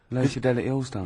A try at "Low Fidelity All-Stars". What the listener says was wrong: Yeah, Low Fidelity, because you went Low Fidelity, wasn't it? No, it's just you didn't open your mouth wide enough.